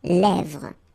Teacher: this E accent grave here, it gives you the E, really open sound